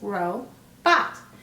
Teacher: O is at the end of the syllable, and it's going to go ahead and say its long sound